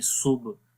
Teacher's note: तो यहाँ पर अगर आप देखें सुब, तो बा ब्लू कलर पे है, तो बा के ऊपर हम कलकला करेंगे और यहाँ पर वीक कलकला होगा।